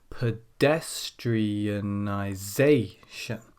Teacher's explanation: we have 2 syllables stressed, and that's number 2 and number 6